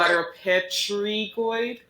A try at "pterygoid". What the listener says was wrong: Pterygoids. Pterygoids. This P is silent. I know it looks like pterygoid, but it's not.